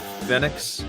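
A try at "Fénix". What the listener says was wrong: it's pronounced Phoenix in Spanish. The E has an A sound, but I mean, he's international, so pretty much everybody just calls him Phoenix.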